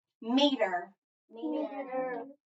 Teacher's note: We know if we hear that long vowel sound in that first syllable, meter, okay, that when we hear it there, that means that syllable is going to be accented. So the first syllable gets the accent